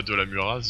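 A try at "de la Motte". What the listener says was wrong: De la Murat, le Z ne se prononce pas.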